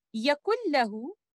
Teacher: letter noon sakina will be completely merged into letter lam. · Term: idgham kamil